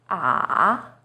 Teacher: Third tone, 三声, is even lower. It first dips down, then rises.